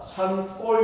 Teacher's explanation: 뒤에 기역이 된소리가 나더란 말이야